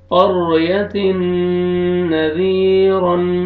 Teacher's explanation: تنوین کے بعد حروف یرملون میں سے نون آ رہا ہے، یہاں پہ آپ نے ادغام کرنا ہے غنہ کے ساتھ